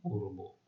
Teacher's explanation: ক এর উচ্চারণ মানে আদ্য অ এর উচ্চারণ ও এর মতোই হচ্ছে